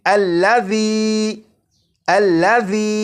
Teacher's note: जाल को सीटी की आवाज के बगैर पढ़ना है · ذال کو سی ٹی کی آواز کے بغیر پڑھنا ہے، اور اسے پڑھیں گے الذی الذی۔